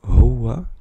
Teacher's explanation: Donc la lettre ha est un H expiré légèrement, au contraire du ha qu'on a vu précédemment.